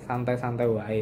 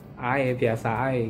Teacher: Misalkan mengerjakan PR, kita mengerjakannya, kita nggarepe santai-santai wae, terlalu ada w nya itu benar-benar ditekankan gitu, wae, seperti itu. Kalau di Madiun itu dia tidak menggunakan w ya, jadi biasa ya, ae, biasa ae gitu loh.